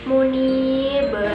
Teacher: Ada pada huruf ba itu dipantulkan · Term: qalqalah kubra